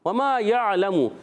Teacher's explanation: واؤ کی ادائیگی ہونٹوں کی گولائی سے اور واؤ پر حرکت زبر کی کھینچنا نہیں ہے